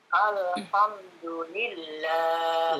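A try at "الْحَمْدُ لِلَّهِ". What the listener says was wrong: Lam enggak ada le-nya, hilangkan le-nya. Jelaskan alhamdulillah.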